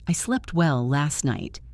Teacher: The phrase last night. We almost never say the T, we say last night.